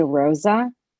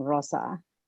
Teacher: the softer s instead of the z